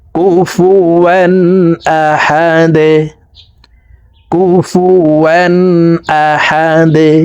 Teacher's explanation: দাল দুই পেশ দুন, দাল কলকলার হরফ, নিচের দিকে ধাবিত করে দালকে সাকিন করতে হবে।